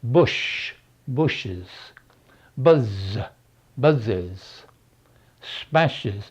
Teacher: all these are called sibilants sibilance because of the S sound we get